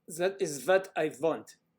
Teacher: It's very common for German speakers to change the TH sound to a Z or an S.